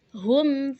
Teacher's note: Kenapa disebut syafawi karena mimnya keluar dari dua bibir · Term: izhar syafawi